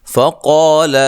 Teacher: قا الف مدہ ہے، قاف کو موٹا ادا کرنا ہے